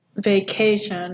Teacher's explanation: And the stress is on K, vacation, right? So it's unstressed, stressed, unstressed.